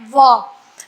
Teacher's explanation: कौन सा है, वकारस्य दंतोष्टम, यानी कि व का उच्चारण स्थान दंतोष्ठ है। वह एकमात्र ऐसा वर्ण है जिसका उच्चारण स्थान दंत और ओष्ठ यानी कि दांत और होठों की सहायता से बोला जाता है